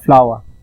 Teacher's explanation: যেমন hour, ফ্লাওয়ার। সাধারণত native speaker যারা, তারা আর এর উচ্চারণটা লাস্টে যদি থাকে আর, তাহলে তার উচ্চারণটা করে না, তো উচ্চারণটা হয় ফ্লাওয়ার।